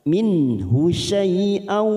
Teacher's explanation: Nun sukun bertemu ha idhar halqi kita baca jelas